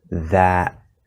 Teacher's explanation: at the end of that we have a glottal stop t